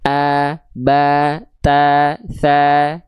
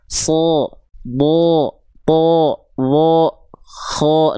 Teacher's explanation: Huruf-huruf yang dia bervokalkan-nya bukan a, tapi condong cenderung seperti vokal O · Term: dibaca tebal, tebal